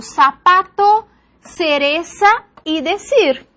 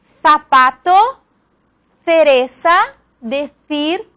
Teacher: consiste en la pronunciación de la S, de la Z y de la C como la S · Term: ceseo